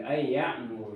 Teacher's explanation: Jadi nunnya ketemu dengan iya, maka hukumnya adalah idgham